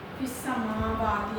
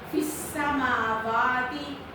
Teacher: ये जो मीम की आवाज़ होती है ना, इसको नाक में भी नहीं जाने देते